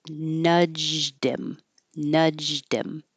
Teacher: So when you have pronouns that begin with H, like he, him, his, and her, hers, and even them, the TH, nudged him. So the D will connect to the M, get rid of the H. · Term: H-deletion